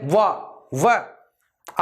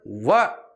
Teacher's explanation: जो वह है वो दांत और ओष्ठ की सहायता से बोला जाता है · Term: दंतोष्टम